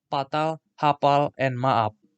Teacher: in samosir the pronunciation of the consonant f is usually changed into p